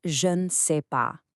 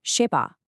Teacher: The ne is basically gone from everyday spoken French,